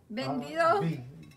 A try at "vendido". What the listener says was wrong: It sounds like bandido, but no. It's with a V. V-E-N-D.